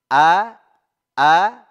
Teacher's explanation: Yang pertama a hamzah. Letaknya di tenggorokan bagian bawah sini.